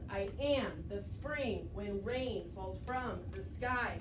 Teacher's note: and the slash means stressed which means that the second word the second syllable in each foot is the one that we emphasize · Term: iambic pentameter, iambic